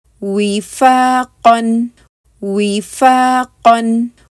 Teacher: वाव की अदायगी के लिए आपने होंठों को अच्छी तरह गोल करना है